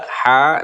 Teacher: ada ha yang di atasnya fathah berdiri, namanya mad tobi atau mad asli, dibacanya 2 harokat. Mengenai fathah berdiri di sini merupakan pengganti dari alif yang dibuang ya.